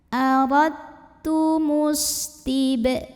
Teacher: salah satu sifat yang tidak memiliki lawan yang dimiliki oleh huruf Sin adalah saofir adanya suara desisan seperti suara binatang seperti suara ular